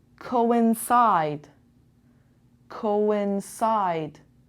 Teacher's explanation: coincidence coincide two vowels two different sounds o n o n and the stress is on the third syllable